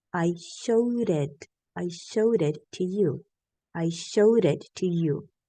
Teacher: t and D between vowel sounds are gonna sound like an R